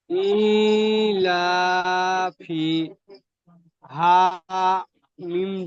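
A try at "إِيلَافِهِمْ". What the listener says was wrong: আবার পাল্টে গেল, ইলাফিম হয়ে গেল ইলাফিহিম। জায়গায় টান হচ্ছে আর কেন হচ্ছে এটা সর্বদাই মাথায় রাখতে হবে, ভুলে গেলে হবে না। কোন জায়গায় গুণনা হচ্ছে আর কেন হচ্ছে, এটা ভুলে গেলে হবে না।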